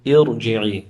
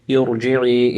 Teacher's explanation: contrary to the rule that ra sakina will be pronounced with tarqiq if preceded by a kasra, the ra will be read with tafkhim